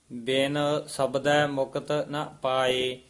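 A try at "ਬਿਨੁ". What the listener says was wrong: बिन आना नन्ना तुसी बंद कर दिने हो बिन नहीं बोल दे बिन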